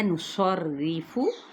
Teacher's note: صاد موٹا ادا کرتے ہوئے را کی جب زیر پہ آئیں گے تو را باریک پڑھا جائے گا